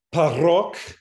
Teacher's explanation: The word parok, that's with a P, that is aspirated.